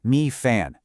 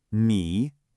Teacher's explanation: The first character, mi, is a third tone. Your voice has to make this shape. It dips down and then comes back up.